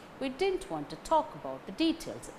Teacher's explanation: Didn't want, talk, details. These words gain stress. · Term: sentence stress